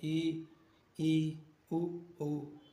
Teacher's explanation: संवृत स्वर लगभग बंद मुख से बोल सकते हैं